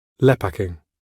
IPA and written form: ˈlɛpakɪŋ (Lepaking)